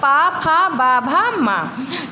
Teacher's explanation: इन व्यंजनों का उच्चारण दोनों ओठों की सहायता से होता है। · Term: ओष्ठ